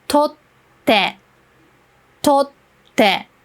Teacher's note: If you're not really familiar with this small t, what you should know is you don't pronounce the t. Instead, you put a small pause between the two letters